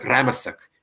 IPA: ˈrämasak